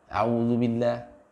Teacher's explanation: Jadi ditipiskan bunyi a'udzu. Ya, jangan tergesa-gesa, juga jangan tebal.